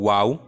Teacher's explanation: ওয়াও উচ্চারণ করতে গেলে আমাদের ঠোঁট দুটি গোল করতে হবে, গোল করে আমরা উচ্চারণ করব ওয়াও।